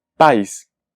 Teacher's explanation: A es una vocal plena, pero I se transforma en una semivocal